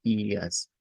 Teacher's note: esa r al final se convierte en una a media